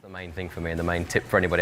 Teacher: his voice has almost a song-like melody going up and down, depending on the words he is emphasising. The main thing for me, and the main tip for anybody out there who's going to do some singing, just don't forget the words.